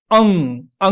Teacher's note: आपका जो टंग का पिछले वाला पार्ट है, वो आपके सॉफ्ट पैलेट को टच करने की कोशिश कर रहा है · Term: वेलर